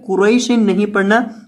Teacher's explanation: یہ جو قاف ہے اسے باریک نہیں بلکہ موٹا کر کے پڑھنا ہے، اور را کو بھی پر کرنا ہے، قاف اور را دونوں کو۔